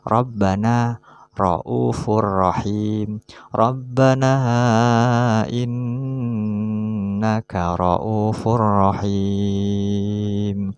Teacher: Dalam lafaz Rabbana, ra'ufun dan rahim, ro-nya berharokat fathah maka harus dibaca tebal. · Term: tafkhim atau tebal